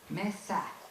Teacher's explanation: al desaparecer la aspiración se abre más la a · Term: a abierta